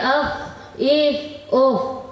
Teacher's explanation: فا کا مخرج نیچے کے ہونٹ کا پیٹ اور اوپر کے دانتوں کے کنارے سے ادا ہوتا ہے